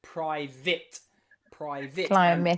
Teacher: in many accents, especially in Britain or the UK, private will be pronounced with a short I